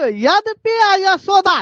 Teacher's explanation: 'या' और 'सा' आदि शब्द एक ही स्थान से आते हैं, यानी तालू से